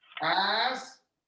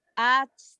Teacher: But you have to sound the K and you have to sound the T.